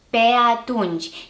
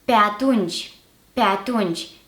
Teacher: However, if we are to bind these two words together or join them together through a hyphen, that e at the end of the first word is going to be reduced and the two words are going to be pronounced together as if they were one word only